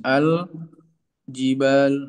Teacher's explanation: Orang Arab membaca izhar pada lam takrif yang disebut dengan lam qamariah ini ya